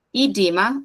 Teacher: os dois Es tem som de I